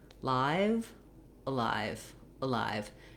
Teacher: hear how i barely spend any time on that at all live has a nice long clear vowel the uh is just very very short little stepping stone to my stress syllable